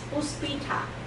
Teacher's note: Indonesia and Filipino do not have aspiration